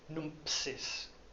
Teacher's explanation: You can't say ms very easily without putting a P in between it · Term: epenthetic P